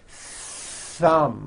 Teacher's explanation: you must stretch out the th sound and hear the air friction · My tongue came out, but there was never any air friction. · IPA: θ